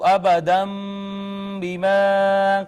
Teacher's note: با نے ما قبل کو چھوٹی میم سے بدل دیا، یہ اقلاب